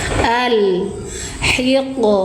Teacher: Innalladzina yaghudduna aswatahum alhiqni bisolihin wa alhiq alif eh kok alif sih ini lam sukun ya bun sifatnya tawasud ketika Mbak Baca lam sukun harus dialirkan suara lamnya satu ketukan